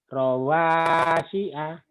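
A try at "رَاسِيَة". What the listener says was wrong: Rawasia. Sia. Bukan si A ya. Sia.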